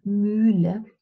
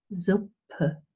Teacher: we can purse our lips as in German mullah or we can relax the lips as in zipper